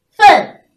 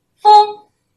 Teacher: 一个是前鼻音，一个是后鼻音，同学们要注意区分